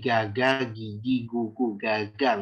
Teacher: gigi itu makhrajnya itu lebih dekat kepada tengah tenggorokan